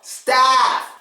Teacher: Now staff, you do have to stress the A sound. Not only do you stress the A sound, you open your mouth.